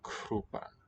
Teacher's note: The K sound spelled C here, aspirated, K, and the one written B is really just an unaspirated voiceless one